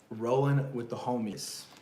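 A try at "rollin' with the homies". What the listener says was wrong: I would take away the G.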